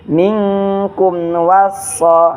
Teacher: Alif lam syamsiyah. Jadi alif lamnya tidak terbaca. Jadi langsung masuk ke huruf so-nya.